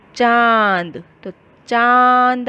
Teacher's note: अनुनासिक की मात्रा का साउंड नाक और मुंह दोनों में से निकलता है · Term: अनुनासिक ध्वनि